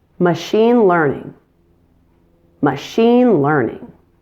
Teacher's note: Machine is stronger than learning.